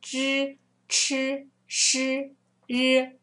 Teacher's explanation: you need to curl your tongue, make your tongue curly, curl over the tongue and press it to the palate.